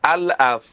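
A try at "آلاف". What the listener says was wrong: না না, আল আফ না, আতে টান হবে। আতে টান হবে, লাতে টান হবে।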